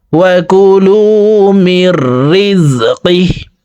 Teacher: হাকে ওয়াকফের ক্ষেত্রে সাকিন করে ফেলবো,